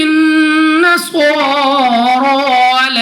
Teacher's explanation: نون مشدد میں ہمیشہ غنہ ہوتا ہے، صاد پر کھڑا زبر ہے، را پر بھی کھڑا زبر ہے، دونوں کو موٹا بھی پڑھیں گے اور 2 سیکنڈ تک کھینچ کر بھی پڑھنا ہوگا۔